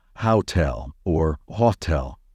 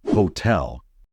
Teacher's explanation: Never pronounce it as hotel or hotel. The stress should be on the second syllable.